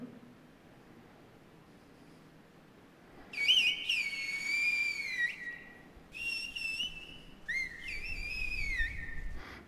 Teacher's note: el segundo, S, está aspirado, y se ve que está aspirado porque sube y después se planifica en la frecuencia.